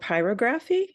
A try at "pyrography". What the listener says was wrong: You're putting the wrong emphasis on the wrong syllable is what you're doing. Pyrography is fine. Pyrography is pyrography.